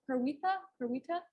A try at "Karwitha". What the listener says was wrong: Yes, you pronounce, well, it's, the I is pronounced like an E. it's like in pen, so it would be Karwitha.